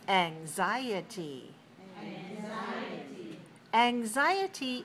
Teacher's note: four syllables stress the second